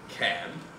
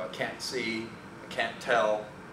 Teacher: And of course, the positive can is pronounced can. So I can see and I can't see are virtually homonymous, especially since the difference is only the presence or absence of a little bit of laryngalization on the end